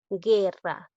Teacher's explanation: Pese a que observo una vocal cerrada que es la U y una vocal abierta que es la E, en este caso no hay diptongo porque la U no se pronuncia